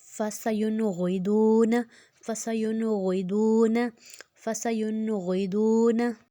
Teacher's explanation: واو مدہ کو ہم نے 2 حرکت لمبا کرنا ہے